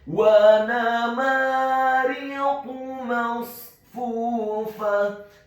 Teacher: huruf qafnya dibaca tafkhim tebal dhammah cukup 1 harokat saja